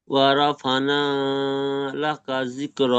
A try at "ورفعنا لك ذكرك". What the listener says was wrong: ফানা হয়ে যাচ্ছে, আইন গুলো উচ্চারণ করছেন না। ফা আইন জেবার ফা।